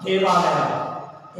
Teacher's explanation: यहाँ पर देव के वा में ह्रस्व अकार है तथा आलया का पूर्व वर्ण दीर्घ आ आता है, इसलिए ऊपर के नियम के अनुसार दोनों के ह्रस्व आ और दीर्घ आ के स्थान में दीर्घ आ हो गया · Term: दीर्घ संधि